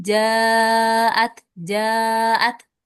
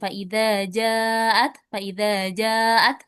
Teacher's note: Ya, di sini namanya mad wajib muttasil ya. Kalau mad wajib muttasil dibacanya 4 sampai 5 harakat.